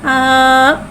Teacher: खड़ा ज़बर को एक अलिफ यानी 2 हरकत के बराबर खींच के पढ़ेंगे। हमज़ा खड़ा ज़बर आ।